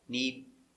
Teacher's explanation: What happens here is we have two D sounds. This D is a stop D. The tongue goes up. Need. And then you make a complete D sound.